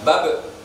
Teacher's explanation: Sebenarnya huruf ba itu memantul, namanya kol-kola. Ketika diwakofkan, dibaca mati, maka memantul. Bukan babi bu bab, tapi babe.